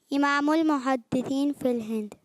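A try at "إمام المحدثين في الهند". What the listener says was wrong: और जोर से। फिल आखिर का खा गए। फिल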